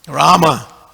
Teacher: there's no O in Rama, because a lot of them like to say Ramo. There's no O there.